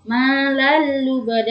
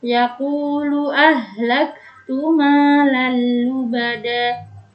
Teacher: yaitu dihukumi dengan idgham bila gunnah, yaitu dengan memasukkan tanpa mendengung. Malal lubada tanpa ditekan, tanpa dengung.